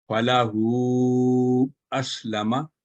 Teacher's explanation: اسی طرح اگلی جو مثال ہے وہ اشباعیہ حرکت فلاحو، اس کے بعد بھی آپ دیکھیں کہ آگے الف حمزہ ہے، اس کے اوپر فتح کی علامت ہے الف حمزہ فتح کے ساتھ، تو ہو کی آواز 3 سے 4 سیکنڈ لمبی ہوئی۔ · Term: مد منفصل